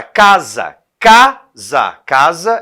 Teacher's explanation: agora casa casa casa é a cá aqui no caso né é a sílaba mais forte e é a penúltima sílaba tônica E no caso essa palavra a gente chama de paroxítona e